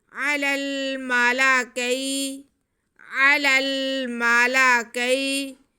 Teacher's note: آگے کاف پہ زبر ہے اور یا ساکن ہے، یا ساکن سے پہلے زبر ہو تو یا لین ہوتی ہے، یہ بھی یا لین ہے، کھینچنا اسے بھی نہیں ہے۔